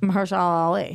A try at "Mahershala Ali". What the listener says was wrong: The way you well, the way you accentuate the Allah at the end of his name. Yeah, so you're like Mahershala Allah Ali. Mahershala Ali. Your L gets stuck in your mouth.